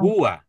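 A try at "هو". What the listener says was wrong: Jadi haknya, hu-nya satu ketukan, wau-nya satu ketukan. Karena keasikan jadinya huwa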